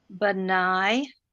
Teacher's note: when you have two ah sounds in a row you like to shorten the first one